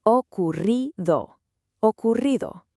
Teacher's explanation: Now, don't try to do a long, hard roll. It's actually a light, quick tap of your tongue on the roof of your mouth. Think of it like a soft vibration. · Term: double R